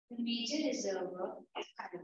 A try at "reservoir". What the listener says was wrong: R should be silent. Again. Once again. Please, once again.